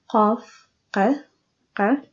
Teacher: It has the pronunciation of qa, which is a little bit to the back of k, and it is made by the back of tongue, rises and touches soft palate